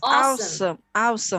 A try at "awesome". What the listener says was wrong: You don't need to say "ow" like that. You just say awesome.